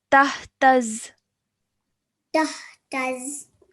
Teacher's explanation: that sound of the zu is replaced with the simple z